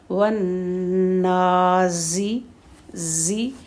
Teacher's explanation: پہلے ون نون پر تشدید ہے، 2 حرکت تک ہولڈ کریں گے، اور پھر کھڑا زبر ہے